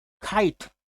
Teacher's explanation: The native English speaking people will utter the k as kite, where the puffing sound is obvious or it is observable.